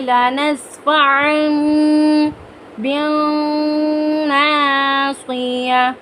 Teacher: نون ساکن کی آواز کو میم کی آواز میں بدل دیں گے کیونکہ تنوین کے بعد حرف با ہے، یہاں پر اقلاب کا قاعدہ لاگو ہوگا.